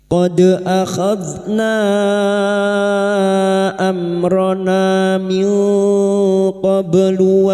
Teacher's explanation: Nun sukun bertemu kaf ikhfa hakiki. Kita samarkan bunyi nun sukun dan mendengung selama 3 harokat.